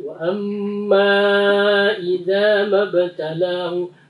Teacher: manya itu mad jaiz, lebihkan dia dari 2 harokat ya